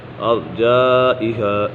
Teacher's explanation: یہاں پر بھی مد متصل ہے اور پھر مدہ کے بعد حمزہ اسی کلمے میں ہے تو اسی وجہ سے مد متصل ہوگا۔